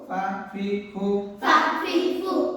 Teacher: ফা হাসি মুখে দাঁতে ঠোঁটে আদায় হবে